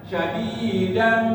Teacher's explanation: Tapi ini karena idgham diguna, tidak saja sadidam tapi harus ditahan. Namanya idgham biguna. Maka dibacanya syadidan, ditahan.